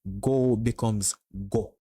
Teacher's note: longer vowel sounds get shortened in Jamaican Creole